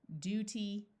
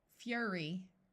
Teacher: The long U has two sounds, U and oo. Notice it uses the oo sound after the D and the U sound after the F.